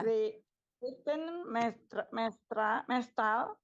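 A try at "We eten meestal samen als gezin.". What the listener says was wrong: We eten meestal. Mees jadi baca panjang. Mees, kemudian talnya sedikit itu apa namanya? Dibacain satu.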